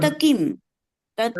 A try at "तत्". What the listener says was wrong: तथा नहीं बोलेगा दीदी, तत्, ओनली तत्।